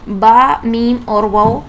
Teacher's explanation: تو پہلے مخرج میں 3 حروف ادا ہوتے ہیں، کیونکہ دونوں ہونٹوں سے حروف ادا ہوتے ہیں، یعنی با، میم اور واو، یہ 3 حروف دونوں ہونٹوں سے ادا ہوتے ہیں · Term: حروف شفویہ